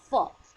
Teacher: इस वर्ग की आगत ध्वनि फ दांत के निचले होंठ में पूरी तरह से स्पर्श न करने से बनती है। आप गैप देख रहे होंगे हल्का सा, ये बना फ।